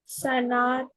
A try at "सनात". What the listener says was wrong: सना, त नहीं, क्या है ये? अधर सना, अधर सना, एक वार्ड हुआ ये, यहाँ से अधर सना, ये एक वार्ड हुआ, राइट?